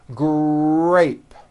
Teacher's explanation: the R sound is stronger and you even hear it more than the G sound. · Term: R blends